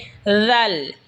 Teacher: জিহবার আগা সামনের উপরের দাতের আগার সঙ্গে লাগা উচ্চারণ হবে জাল